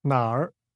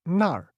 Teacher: when pronounced using a falling Rising tone the word Nar means where however when this word is pronounced with just a falling tone Nar it means there